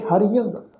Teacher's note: ਜੋ ਤੁਸੀਂ ਦੇਖੋ ਵੀ ਅਖੀਰ ਦੇ ਉੱਤੇ ਐੜਾ ਅੱਖਰ ਸਵਰ ਆਇਆ, ਉਹਦੇ ਉੱਪਰ ਜੋ ਟਿੱਪੀ ਦੀ ਮਾਤਰਾ ਆਈ ਹੈ ਉਸ ਦਾ ਨਾਸਕੀ ਉਚਾਰਨ ਕਰਾਂਗੇ